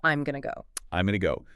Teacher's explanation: the phrase going to almost universally reduces down to gona. Gonam.